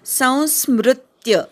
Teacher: तच्च त वर आघात संस्मृत्य स वरच्या अनुस्वाराचा उच्चार करायचा संस्मृत्य स नंतरचा जो मृ आहे त्या मृ वर आघात घ्यायचा संस्मृत्य पुन्हा मृ वर आघात स वरच्या अनुस्वाराचा अ उच्चार करायचा